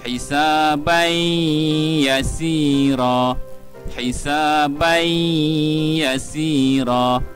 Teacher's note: tanwin dan selepasnya adalah huruf ya ini adalah idgham maal ghunnah kita perlu masukkan bunyi tanwin ke dalam huruf ya